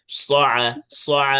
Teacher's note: স আতে টান হবে না, হরকত আছে আইনে, আর আইনটা উচ্চারণ করতে হবে কি, কণ্ঠনালীর মধ্যখান থেকে, হলকের মধ্যখান